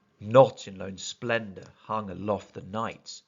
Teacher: Within line 2, there is another disruption to the expected iambic meter with the trochee within the first beat